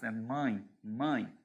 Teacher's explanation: quando você fala mãe você tem ditongo mas não é um ditongo aberto